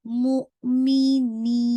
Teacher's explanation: چاہیے، لِلْمُؤْمِنِينَ، ٹھیک ہے، آپ نے جھٹکے سے پڑھنا ہے، اور جب آپ اس کو روکیں گے نین کو تو نی کی آواز میں غنہ نہیں آنا چاہیے ، جب آپ بالکل اسٹاپ کر رہے ہوں گے اس وقت